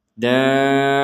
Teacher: karena kita berhenti sehingga huruf Ta ini terbaca sebagai huruf ha